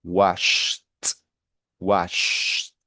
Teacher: Porque el sh no vibra, entonces como no vibra, la ed se pronuncia como si fuese una T.